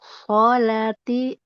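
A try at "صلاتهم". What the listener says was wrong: Panjang lamnya. Tihim. Tihim. salatihim. Him.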